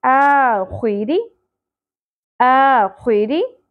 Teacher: आ खुई री, रॉ, रॉ के नीचे ज़ेर आ गई, बारीक होगा